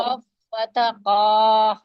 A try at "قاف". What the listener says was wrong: نہیں لمبا نہیں دیکھیں وہ اتنی ہوتی ہے بس، ٹھیک ہے؟ بنا، بس یہ ایک حرکت ہے۔